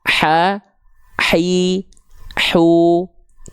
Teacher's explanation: hak kecil itu dia dilafalkan dari bagian tengah tenggorokan